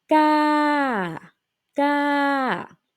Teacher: The falling tone start at the high pitch and then falling to the lower pitch.